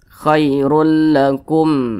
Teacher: cara bacanya jelas tidak berdenggung pendek saja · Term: izhar syafawi